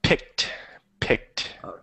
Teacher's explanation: Pickled makes an ed sound, but picked makes the T sound.